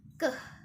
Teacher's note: keh ini merupakan plosif atau letupan. Nah, masuk pada tak bersuara.